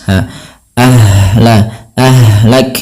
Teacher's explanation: ha di sini juga ada yang kita namakan dengan sifat rokhawah, mengalirnya nafas